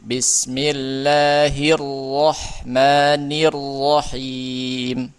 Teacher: Ro-nya tebal dan bertasydid.